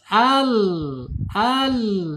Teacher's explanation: Yaitu ujung lidah ya ujung tepi lidahnya menyentuh langit-langit ya disejajarkan dengan gigi dari atas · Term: lam